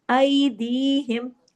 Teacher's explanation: ये दोनों कंडीशनें देख लें, जब या साकिन हो और उससे पहले जबर हो तो वो यालीन होता है, आवाज में नरमी से मोड़ पैदा हो जाता है